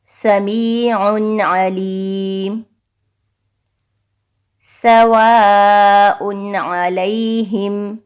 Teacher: یعنی تنوین والے حرف کو بغیر غنہ کے پڑھیں گے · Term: اظہار